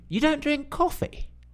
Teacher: if you say something to me and I don't believe it I can just say the same thing back and with a rising tone